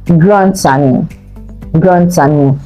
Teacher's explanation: the D will be linked to the A, then you pronounce the D as T. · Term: liaison